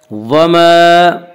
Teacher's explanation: الف سے پہلے زبر ہوتا ہے، الف مدہ کو 1 الف کے برابر کھینچ کر پڑھیں گے